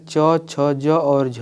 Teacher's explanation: अगर हम बात करें च, छ, ज और झ को तो इनको हम लोग संघर्षी स्पर्श व्यंजन बोलते हैं